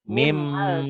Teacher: Ditulisnya ada bunyi N-nya dibacanya bunyi N-nya hilang. Hilang melebur ke bunyi M.